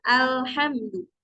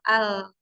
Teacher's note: Jadi suaranya berbelok ya, yang harusnya ke tengah keluarnya tapi jadi ke samping. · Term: inhiraf